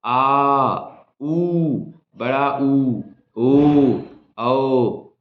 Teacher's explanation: तो पश्च स्वर में जरा देखिए, जैसे ही आप पश्च स्वर की बात करते हैं और आपको पता चलता है कि जीभ के सबसे पीछे वाले हिस्से में ही वायु का दबाव बनता है।